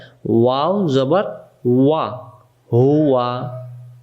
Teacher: ওয়া অক্ষর দুই ঠোঁটের মাঝখানের ফাঁকা থেকে পড়তে হয়